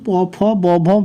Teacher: ওপর ও নিচের দুই ঠোঁট একে অপরকে ছোঁয়। দেখো তুমি প ফ ব ভ বলো, দুই ঠোঁট অটোমেটিক্যালি একে অপরকে স্পর্শ করবে বা ছোঁবে, তার জন্য একে বলা হয় ওষ্ঠবর্ণ।